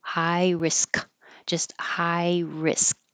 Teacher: I had that little mark there to remind me don't make the K, high risk, just high risk. The tongue stops in the K position.